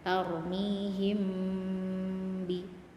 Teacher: Nah, di sini ada mim bertemu ba. Bacanya dengung sama karena mim itu huruf di bibir, ba juga hurufnya di bibir, jadi sekalian bibirnya mingkem.